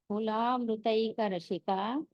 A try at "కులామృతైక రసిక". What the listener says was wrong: ష కాదండి స రసిక రసిక ఆ మళ్ళీ అనండి ష ష కాదు సరళ సరళ